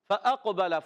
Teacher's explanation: فا کا مخرج اوپر والے دانتوں کے کنارے جب نیچے والے ہونٹ کے تر حصے سے ٹکراتے ہیں لگتے ہیں تو ادا ہوتا ہے فا.